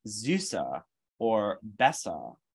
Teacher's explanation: unaccented neutral vowel but that's lower than a schwa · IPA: [ɐ]